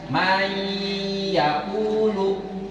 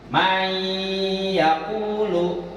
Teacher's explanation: Nun mati ketemu dengan ya. Ya, jadi dimasukkan seakan-akan nunnya nggak ada. Langsung aja masukin dari mim ke ya. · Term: Idgham biguna